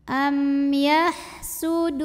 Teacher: Maka cara bacanya alif lam tidak dibaca melainkan dimasukkan langsung ke nun berikutnya atau diidghamkan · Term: alif lam syamsiah